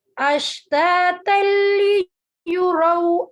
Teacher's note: تنوین کے بعد لام آ رہا ہے بغیر غننے والا ادغام